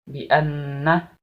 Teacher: Bi anna nunnya itu ditasydid, maka hukum bacaannya gunnah.